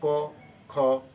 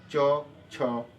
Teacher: इनको बोलने में हमारी स्वर तंत्रियों में कहीं भी कंपन नहीं हो रहा है, इसलिए ऐसे व्यंजन को हम अघोष व्यंजन कहते हैं।